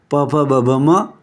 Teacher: હોઠ અડે ત્યારે પ બોલાય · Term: ઓષ્ઠ્ય